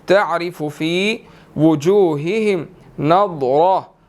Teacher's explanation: ضاد اور را دونوں کو ہم نے موٹا ادا کرنا ہے